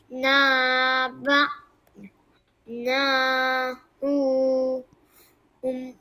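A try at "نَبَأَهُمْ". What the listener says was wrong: Bukan na hum. kena baca nahum. Semua semua satu harakat.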